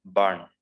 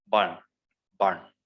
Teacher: in the british accent it is burn r is silent